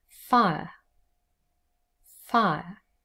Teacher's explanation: it's always a diphthong first and then the schwa sound · we have the diphthong i and our schwa sound er and together the word is fire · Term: triphthongs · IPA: /faɪəʳ/